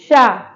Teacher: ये जो हमारी सा है ये तालव्य सा है। इस सा का उच्चारण करते समय जो हमारी जिह्वा का अग्रभाग है वो तालू में जाके लगेगा।